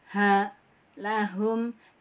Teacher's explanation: Makhrajul huruf H adalah di pangkal tenggorokan. Makhraj huruf H di pangkal tenggorokan sama dengan hamzah.